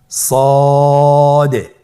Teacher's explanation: সদ হরফটি পুর হরফ মোটা হরফ উচ্চারণ ক্ষেত্রে মোটা করে পড়তে হবে এবং উচ্চারণ করার সময় তিন আলিফ টেনে পড়তে হবে আপনার আমার